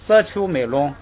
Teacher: 这个读沙丘美龙的时候，这个沙就应该弱化一下，读成色丘美龙